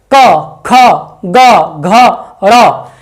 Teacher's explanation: ठीक है, देखिए का वर्ग का जो क ख ग घ ङ, ये सभी जो पांचों वर्ण हैं, पांचों व्यंजन है, वो कंठ से उत्पन्न होते हैं। जब जो हवा निकलती है वो कंठ से टकराकर डायरेक्ट बाहर निकलती है।